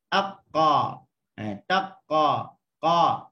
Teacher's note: pangkal lidah menempel di langit atas yang lembut. Maka saluran untuk suara keluar melalui mulut sudah tertutup semuanya.